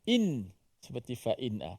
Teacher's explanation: Dimatikan nun itu. Dibunyikan suara nun mati itu dan tanpa dengung.